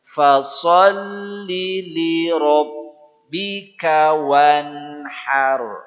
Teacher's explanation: 3 ya, titik tekannya fa, kemudian li tidak panjang dan ha. Fa, kemudian li-nya tidak boleh panjang, kemudian ha-nya baguskan.